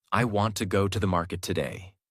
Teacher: Want, go, market are strong. Other words become lighter and faster. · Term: Natural American rhythm